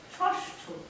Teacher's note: মূর্ধন্য স মানে এই স এর উচ্চারণ হচ্ছে মূর্ধা, আমাদের মুখগহ্বরে মূর্ধা স্থান থেকে যে স হয়, যে স হয় সে হচ্ছে মূর্ধন্য স।